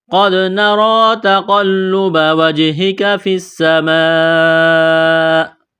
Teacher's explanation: سین میں سیٹی کی آواز پیدا کریں گے، سین کو دبانا ہے۔ یہ لمبی مد ہے، 4 الف کے برابر کھینچنا ہے۔ · را کے اوپر کڑا زبر ہے، را کو موٹا کرنا ہے، ایک الف کے برابر کھینچنا ہے